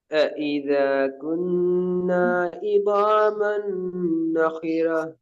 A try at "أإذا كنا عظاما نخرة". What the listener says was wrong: இத அந்த தாளை நீட்டுறது போதாது. ஏன் போதாது என்றால் இந்த தாள் நீட்டுறது இந்த நாவ் நீட்டுறதெல்லாம் பேலன்ஸ் ஆகணும்.